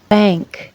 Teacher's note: the soft pallet is lowered and all the air passes out through the nose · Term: Velar nasal